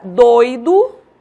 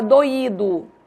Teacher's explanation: Eu faço a diferença pela acentuação. Em doido, eu não acentuo. Eu pronuncio como ditongo. Em doído, eu acentuo o I. E aí eu pronuncio como hiato.